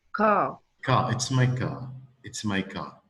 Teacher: But in the British accent, they will not pronounce the R in it.